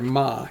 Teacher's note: There's a high even tone